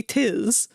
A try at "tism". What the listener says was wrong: It's autism, not autis. Where does the M go? Why is your M silent? Tism.